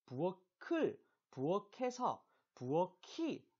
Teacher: 끝소리 규칙을 적용하지 않고 네, 요 키읔을 그대로 연음시킵니다. 그래서 부어키가 돼요.